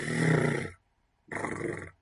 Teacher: Bueno, primero tenemos esta consonante, este fonema, que se representa y se caracteriza como una consonante alveolar, es decir, la punta de la ápico alveolar en rigor, la punta de la lengua toca los alvéolos, vibrante múltiple, es decir, el contacto ocurre como una especie de vibración eh, que es además múltiple, es decir, que ocurre varias veces, y sonora.